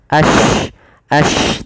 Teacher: Yaitu intisyarusut. Menyebarnya suara di dalam mulut. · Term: tafasyi